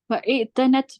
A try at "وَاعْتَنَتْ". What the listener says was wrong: So when you have a harf ataf coming with hamzatul wasl, this is called hamzatul wasl. When you have that, you don't pronounce the e. You don't say wa'i'tanat. You just say wa'atanat. So that kind of like, that kind of gets a sukun. Wa'atanat.